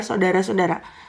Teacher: Dari segi pengucapan, bunyi au pada kata saudara diucapkan menjadi o